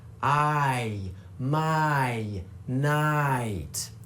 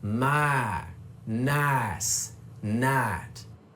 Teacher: for a southern accent, we cut off that second sound, which gives us my, nice, night. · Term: I shift